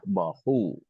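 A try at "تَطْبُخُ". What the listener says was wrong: Pakai kho ya. Tatbahu.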